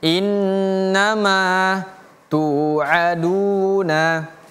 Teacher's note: Innama mananya panjang dua harakat.